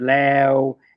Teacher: So if you can round your mouth, you can say the W at the end.